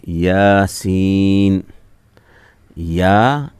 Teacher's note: यहाँ या के मुकाबले में सीन को थोड़ा ज़्यादा खींचेंगे